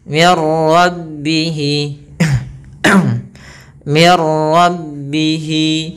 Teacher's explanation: nunnya atau suara nunnya dimasukkan ke huruf ra sehingga nunnya hilang. Dan idgham bila gunnah atau ini juga bisa berlaku dengan idgham kamil, idgham yang sempurna.